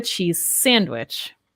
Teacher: i didn't say that z sound cheese very strongly right but we linked the sounds